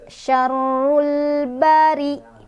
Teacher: Ada alif lam bertemu dengan huruf qamariyah yaitu ba. Cara bacanya lamnya dibaca jelas. · Ri-nya dia dibaca secara tarqiq karena ro-nya berbaris di bawah atau kasroh. Jadi otomatis kalau barisnya di bawah, maka dia dibacanya tipis, bari. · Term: alif lam qamariyah